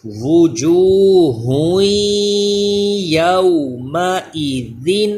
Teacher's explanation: تو یا حروف یرملون ہے، اس لیے ادغام کا قاعدہ غنہ کریں گے